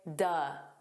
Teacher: you can take the word of and you can make it an unstressed sound and say duh.